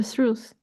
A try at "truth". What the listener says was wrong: Forget about this H, not truth.